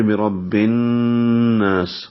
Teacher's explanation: آواز کو ناک کے پاس سے یعنی خیشوم میں لے جا کر 2 حرکات تک آواز کو ٹھہراتے ہیں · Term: غنہ